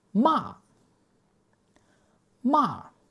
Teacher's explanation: this is a sharp falling note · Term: fourth tone